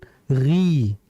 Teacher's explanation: Karena huruf ghain ini sifatnya dia isti'la, namun bukan itbaq. Maka kita nggak boleh baca ghi, tidak.